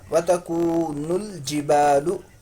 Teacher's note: الف مدہ ہے، ایک الف کے برابر کھینچیں گے